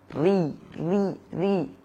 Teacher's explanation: karena ra itu jika berharakat kasrah maka dia tipis